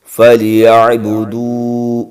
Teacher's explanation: والصیف، فَلْيَعْبُدُوا، فا کو لام کے ساتھ، یا کو عین کے ساتھ، فَلْيَعْبُ، دال کو واو کے ساتھ، ایک الف کے برابر کھینچ کے پڑھیں گے